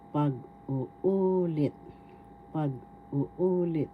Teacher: First syllable pag, second syllable u, third syllable u. The third syllable has the accent, so we pronounce this or bigkas pag-uulit.